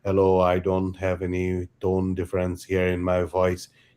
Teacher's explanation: the resulting pitch becomes like you know monotonic kind of thing